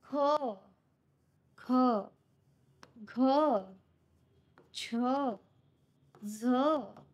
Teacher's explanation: ह पण आहे, ह मिसळून आहे. आणि दुसरं काय होतं की फुफ्फुसातली हवा जी काही आहे जोराने बाहेर टाकली जाते. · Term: महाप्राण